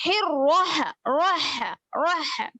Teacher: روح روح روح، کیونکہ رو پہ زبر ہے، رو کو پر پڑھیں گے اور ہا کی آواز اوپر کی طرف جائے گی